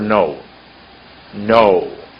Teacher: when you say go there's a W at the end of that word